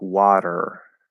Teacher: a flap T is a flapped D sound